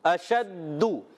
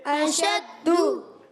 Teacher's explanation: اشدو، شین کی ادائیگی کلیئر کریں گے، حمزہ پر زبر، شین پر زبر، دال پر پیش بھی ہے اور ساتھ میں تشدید بھی ہے، ذرا رک کر ادا کریں گے